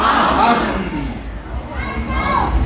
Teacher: دونوں ہونٹوں کا اب باہر والا خشک حصہ ملا ہے تو میم ادا ہوئی ہے